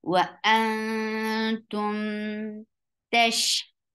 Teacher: You're hiding the sound of noon and going towards the makhraj of ta. Ta is light, so your tongue should be in a straight position. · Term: ikhfa